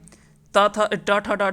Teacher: जो है वो मूर्धन्य से होता है